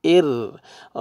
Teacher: را سکون سے پہلے کسرہ آ رہا ہے تو را کو باریک کریں گے